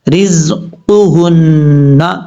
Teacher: یہ جو دو نقطوں والا قاف ہے اس کا مخرج ہے زبان کی جڑ اوپر والے تالو کے نرم حصے سے لگے تو قاف پڑھا جاتا ہے